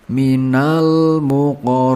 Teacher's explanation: Huruf bin di sini dibaca panjang, selama tiga alif atau enam harakat.